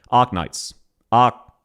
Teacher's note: The R is barely there.